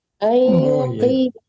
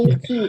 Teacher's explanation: Kaf itu walaupun dia kasrah tetap tebal karena dia hurufnya asalnya tebal ya.